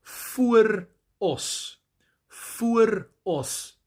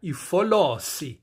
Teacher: And this word, vooros, was adopted into the isiZulu language, but the R was dropped, the R sound, and it became an L